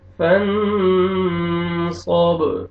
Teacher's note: فن صاد، صاد کو موٹا کر کے پڑھیں گے، آگے با کے ساتھ ملائیں گے، اور با حروف قلقلہ میں سے ہے، ڈبل ساؤنڈ آئے گا